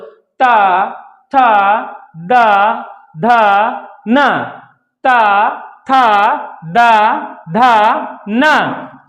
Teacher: ता वर्ग के वर्णों को जब बोलते हैं तो हमारी जीवा क्या करती है? दांत को स्पर्श करती है, दांतों में स्पर्श करती है।